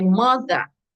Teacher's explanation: Stress is on the first syllable.